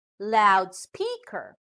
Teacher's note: compound words with two elements and the stress are on the second element of the words